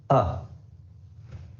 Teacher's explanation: to pronounce it the schwa sound is pronounced like this uh it's a very short relaxed sound just open your mouth a little relax everything and let out a little bit of air